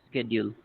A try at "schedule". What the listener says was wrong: Yes. Yes.